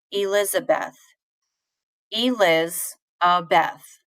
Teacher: So I don't stress the E, I put more stress on Liz.